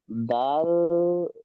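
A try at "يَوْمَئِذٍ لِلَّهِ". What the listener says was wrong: জাল, দাল নয় জাল, জাল লাম দুজের জিল, লাম লাম জের লিল, ইয়াউমা ইজিল, ইয়াউমা ইজিল লিল, লাম খাড়া যাবার, লাম খাড়া যাবার লা, টান দিতে হবে এক আলিফ। ইজিল্লিল্লাহ, আর এখানে আয়াতের শেষে হা সাকিন হয়ে যাবে। ইজিল্লিল্লাহ। ওয়াল আমরু ইয়াউমা ইজিল্লিল্লাহ।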